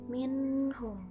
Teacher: huruf nun berharkat sukun bertemu huruf H dibaca jelas tidak berdengung sama sekali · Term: izhar